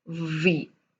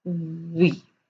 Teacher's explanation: where you touch your lower lip with your upper teeth and you say v and where you round your lips and you say we